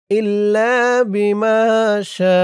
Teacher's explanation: শা ৪ আলিফ টান হবে মধ্যে মুত্তাসিল